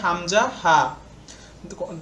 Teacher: লিখো উত্তর কণ্ঠনালী থেকে নিম্নমুক্ত বর্ণগুলো উচ্চারিত হয় যেমন এক নাম্বার কণ্ঠনালীর শুরু থেকে উচ্চারিত হয়